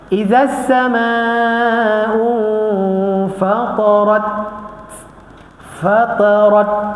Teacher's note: ada angin dan dia juga merupakan huruf syiddah tertahan